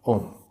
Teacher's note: ओम में ओ की ध्वनि को खूब खींचा जाता है